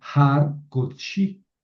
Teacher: Entonces es una sílaba cerrada, no acentuada. Entonces ese kametz es un kametz hatuf y suena O.